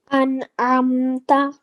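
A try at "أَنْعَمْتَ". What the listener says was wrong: Well done. Excellent.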